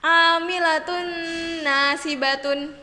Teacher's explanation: Contoh yang ketiga yaitu apabila tanwin domatain bertemu dengan huruf nun, maka cara membacanya amilatun nasibatun. Jadi huruf nunnya seperti ditasydidkan dan dibacanya dengan mendengung. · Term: Idgham Bighunnah, idgham biguna